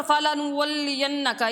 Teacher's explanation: نون مشدد ہے، اس لیے یہاں پہ ہم غنہ کر کے ادا کریں گے